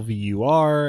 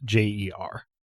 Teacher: the stress on the first syllable vur and the second syllable unstressed jer